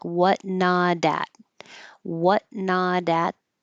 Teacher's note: You won't hear that t because the t changes to a d and it sounds like whatn not at what nod at.